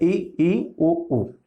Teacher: तो कौन सा है? देखिए, ई उ बिल्कुल मुंह बंद है ना, क्लोज है मुंह, ना के बराबर खुला है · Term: संवृत